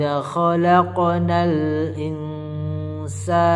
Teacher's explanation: nun sukun nya sebentar saja in baru kita masukkan ke hidung suaranya baru-baru kita siap-siap menyebut huruf tsa jadi investasi laqod kholaqnal ysaha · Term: ikhfa Haqiqi